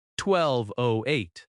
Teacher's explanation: If the address is 1208, you might say 1208. The zero becomes oh.